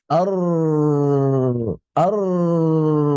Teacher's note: huruf ro itu getarannya atau nempel langit-langit itu cuma sekali